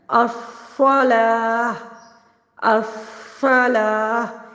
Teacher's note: اب اس کو پر کر کے پڑھنا ہے، الصلاۃ، الصلاۃ، سیٹی بھی ہے اور پر بھی پڑھا جا رہا ہے